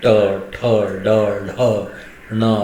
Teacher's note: Ta Varga is what is known as retroflex sounds, when you sort of curl your tongue on your palate and you strike this hard sound like ta, tha, da, dha, na, like that.